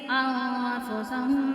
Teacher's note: اب اخفا کی صورت میں غنہ کریں گے